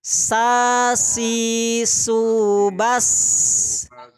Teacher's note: huruf Sin ini keluarnya dari ujung lidah dengan ujung gigi seri bawah